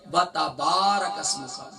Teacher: با کا مخرج کیا ہے؟ دونوں ہونٹوں کے ویٹ part of both lips